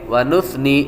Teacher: ونثنی، اکثر اوقات ونثنی پڑھا جاتا ہے، اور یہ ونثنی نہیں بلکہ ونثنی، یہ سا ہے، اور سا کے اندر سیٹی کی آواز نہیں آتی